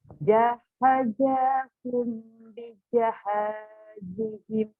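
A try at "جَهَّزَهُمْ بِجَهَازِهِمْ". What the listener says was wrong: Nih, di sini tidak ada tasdid. Ini huruf zai, bukan jim. Ayo diulang.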